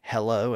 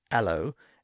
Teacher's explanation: too many people were dropping the H sound in their words pronouncing words like hello as Alo